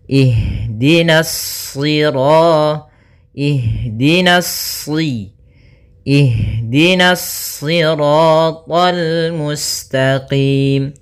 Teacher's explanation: nanya tipis shadnya baru yang ditebalkan